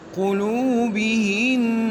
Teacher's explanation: اس میں غنہ ہے تو وقفاً بھی غنہ کیا جائے گا